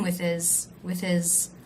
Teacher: also the word his a possessive pronoun he came with his with his just like with very low in pitch unstressed